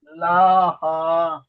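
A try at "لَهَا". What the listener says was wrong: লা টান দিচ্ছেন কেন? হা টান দেন লাহা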